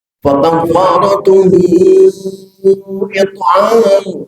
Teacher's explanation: Nah, hu di sini madsilah. Cuman karena kedepannya ketemu hamzah, maka madsilahnya disebut madsilah tawilah. Panjangnya boleh sampai 6 harokat.